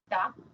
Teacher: Es la punta de la lengua la que toca los dientes